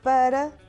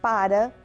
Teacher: para, que é uma preposição em que a vogal é fechada, e para, que é o verbo parar, em que a vogal já é aberta. Como veem, escrevem-se da mesma forma, mas têm pronúncia diferente.